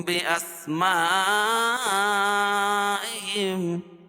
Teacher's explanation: اخفاء شفوی ہوگا. اس میں اخفا کریں گے، ناک میں آواز کو چھپا کر پڑھیں گے.